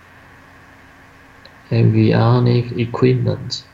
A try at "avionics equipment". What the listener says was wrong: with an S. Avionics equipment.